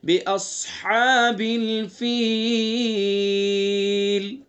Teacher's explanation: ہاں کو حلق سے ادا کریں گے، چونکہ ہاں حلق سے ادا ہوتی ہے